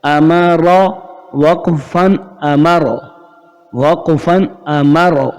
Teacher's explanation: میم اپنی جگہ رہے گا، را موٹا ہو جائے گا وقف کی صورت میں اور پڑھنے کی بھی صورت میں. را کے اوپر زبر آ رہا ہے اس وجہ سے.